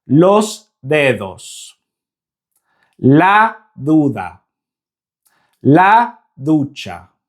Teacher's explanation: See how the Spanish D is so much softer than the English D.